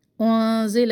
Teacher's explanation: بما انزل، مد منفصل، 2 الف برابر اس کو لمبا کرے. انزل، اخفا نون پر، اور لام کا جو زبر ہے اس کو بھی لمبا نہ کرے